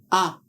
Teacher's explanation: Open or vowel sound is made with the tongue in a low back position in the mouth. Ah is a voiced sound.